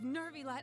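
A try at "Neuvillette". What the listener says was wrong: There's no R. the new Villette part in E and it just turns into Nervilet. Because they can't say new Villette.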